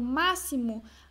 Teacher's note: a sílaba tônica essa daqui ó Essa é a antepenúltima tá então a sílaba tônica é a antepenúltima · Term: proparoxítona